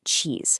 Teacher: swapping that buzzy Z for a quiet S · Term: devoicing